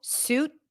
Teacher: in American English, generally the T at the end is held, suit, but it's not a mistake if you pop it, suit, if that's easier for you.